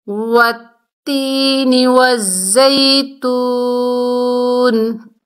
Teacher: تو یہاں پر ہم نے سٹاپ کیا، وقف کی حالت میں نون کی زیر ختم ہو گئی، نون ساکن ہو گئی، وقف ہوا، وقف بالاسکان۔